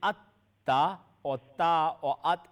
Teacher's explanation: The sound is emitted, comes out from the top part of the tip of the tongue. At the top part, remember, at the top part of the tip of the tongue and the gum line of the two top incisors.